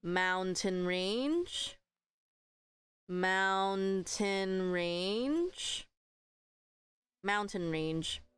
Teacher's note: It just sounds weird. Mountain range. So the stress is at the front.